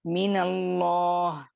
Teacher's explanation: नून को मुतहर्रिक कर दिया गया, फतहा दे दिया गया, जिसकी वजह से वहां पर पढ़ने में आसानी हो गई।